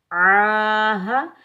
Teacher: ہاں کو سینے والی طرف والے حلق سے ادا کریں گے